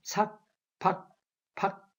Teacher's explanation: 이제 다음 모음이 와야 이게 밖에 이렇게 변하여 쾌가 밖에 이런 식으로 이제 되지만 한 발음만 한다면 삭, 박, 박 이렇게 공기가 멈춘 채 소리가 그칩니다.